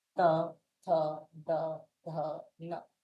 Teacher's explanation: यानी आपकी जो जीभ है दांत को टच करे